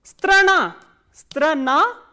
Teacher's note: Strana, strana, as you can see this a is, the last a is stressed, that is why it is pronounced as strana